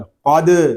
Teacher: قاف کو پر کریں گے کیونکہ یہ حروف مستعلیہ میں سے ہے، آگے دال ساکن ہے، اس میں کلکلہ خوب ظاہر کریں گے کیونکہ دال حروف کلکلہ میں سے ہے، اور جب حروف کلکلہ ساکن ہوں تو ان میں کلکلہ خوب ظاہر ہوتا ہے۔